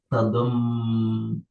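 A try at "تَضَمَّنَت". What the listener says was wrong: Tadom manat. Oh ini kurang ya. Harusnya ada nunya ya. Tadom manat.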